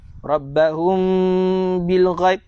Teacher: Kita baca secara itba', dengung 2 rakaat, bibir berjumpa dengan bibir, dirapatkan, bersentuhan secara ringan saja. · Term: ikhfa syafawi